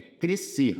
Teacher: Esse sc é dígrafo, é. É crescer, perceba que o s não sai